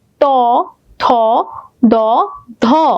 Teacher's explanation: দাঁতের উপরে যে শেকরগুলো আছে মূলগুলো আছে সেগুলোতে টাচ লাগছে · দন্তন্য মানে হচ্ছে, দন্ত মানে দাঁত, যখন আমরা উচ্চারণ করছি ত, দেখো দাঁতের উপরে যে শেকড় গুলো আছে, মূলগুলো আছে, সেগুলোতে টাচ লাগছে, ত, থ, দ, ধ, তাহলে এটার নাম দিব আমরা দন্ত।